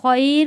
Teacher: جب ہم خیر کو وقف کریں گے تو 2 الف کے برابر اس کو کھینچ کر ہم وقف کریں گے